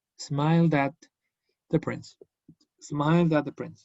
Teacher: Tengo una D, lo uno con la at.